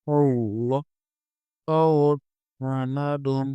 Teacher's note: حمزہ اور لام کو ملائیں گے، لام کے اوپر کھڑا زبر ہے، اسے کھینچ کر پڑھیں گے۔ ہاں کو صاد کے ساتھ ملائیں گے، صاد کو پر یعنی موٹا پڑھیں گے اور صاد حروف صفیریہ میں سے ہے، اس میں سیٹی کی آواز نکلے گی۔